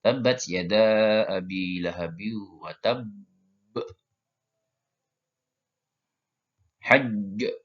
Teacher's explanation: Terbacanya adalah ditahan untuk menyempurnakan tasydid lalu dipantulkan.